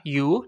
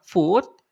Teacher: Ke-28 ada suara u, ya, u, suara yang u yang panjang, ya. Contohnya, letter O dan U pada kata you, ya, you dibaca panjang.